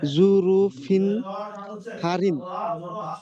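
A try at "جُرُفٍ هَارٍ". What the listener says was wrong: হারিন, হা টান হবে, হা আলিফ জবর হা, আচ্ছা, এটা বলেন।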